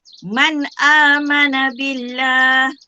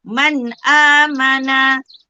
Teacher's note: Dia kata izhar haki ni perlu dibaca dengan terang dan jelas tanpa dengung.